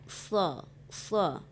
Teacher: Dia makhrajnya memang rendah ya, lidah kita itu direndahkan sha, tetapi itu huruf istilah suaranya harus ditinggikan, vokalnya itu tinggi dia, huruf sha.